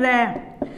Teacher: रह का उच्चारण करते हैं तो हमारी जीवा में क्या होता है, कंपन होता है। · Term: प्रकंपित